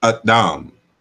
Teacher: a glottal stop sound in front of Dam